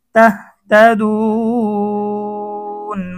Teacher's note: মদের হরফের পরে ওয়াকফ করলে মধ্যে আরজি 3 আলিফ টেনে পড়িতে হয়।